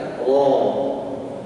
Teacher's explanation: Saat mengucapkannya pangkal lidah terangkat.